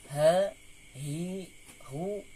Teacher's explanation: itu ya sama seperti hamzah dari halqi dari pangkal tenggorokan